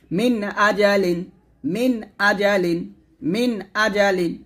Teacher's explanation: নুন সাকিন এবং তানভিনকে স্পষ্ট করে পড়তে হবে, অর্থাৎ গুন্নাহ করা যাবে না